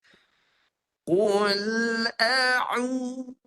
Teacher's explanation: Sedangkan huruf ain keluar di tengah halkum.